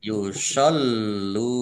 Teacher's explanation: Dibaca jelas. Kemudian lamnya dibaca double, ada tasdidnya. Yusollu. Biar tampak doublenya, maka ditekan.